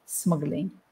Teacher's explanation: you've got a consonant cluster so we have to say smuggling we actually put an uh in the middle to make it easier